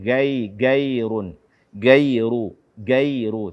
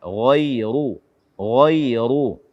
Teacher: Kemudian mengganti ghain dengan g